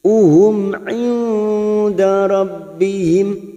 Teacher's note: Mim sukun bertemu ain idhar safawi kita baca jelas tanpa mendengung